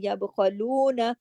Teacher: یب خلون، خا، خا موٹا پڑا جائے گا. یب خلون، نون کو زیادہ نہیں کھینچیں گے، صرف ایک حرکت